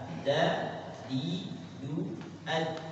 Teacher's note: Itu sifatnya syiddah. Dal punya sifat jahar, gak menghembuskan